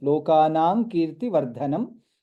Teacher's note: Lokanam kirti vardhanam, dha is mahaprana. Since anuswara is followed by ka, it will be lokanang kirti vardhanam.